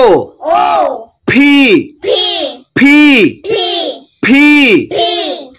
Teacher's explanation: দুই ঠোঁট দিয়ে উচ্চারণ করে, জোর দিয়ে শক্তি দিয়ে উচ্চারণ করে। এটা উচ্চারণ আমার সঠিক হচ্ছে কিনা এর যাচাই করার নিয়ম হলো ছোট একটা কাগজ ঠোঁটের সামনে ধরতে হবে, যদি এই কাগজটা ওড়ে তাহলে বোঝা যাবে আমার পি উচ্চারণটা সঠিক হচ্ছে।